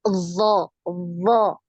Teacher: dia punya aliran suara tapi tidak punya aliran nafas ya jadi tertahan untuk aliran nafasnya enggak ada ngalir nafas ketika kita mengucapkan huruf do do ini